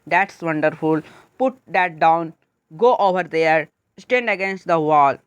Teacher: पहले ज़ोर से बोलते हो और फिर धीरे धीरे जो है सो आपका टोन शांत हो जाता है, तो वही आपका कहलाता है डाउनवर्ड जो है फॉलिंग जो है सो इंटोनेशन। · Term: डाउनवर्ड इंटोनेशन